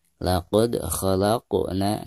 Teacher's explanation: Huruf qaf adalah salah satu huruf qalqalah, dan di sini posisinya berada di tengah bacaan dengan sukun, ya. Jadi, ini dianggap sebagai Qalqalah Sugra, dan harus dibaca dengan suara yang memantul ringan.